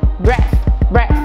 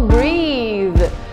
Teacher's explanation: Então, olha que importante é, com sons muito parecidos dentro de breathe, você vai ver que a vogal também é um pouco mais longa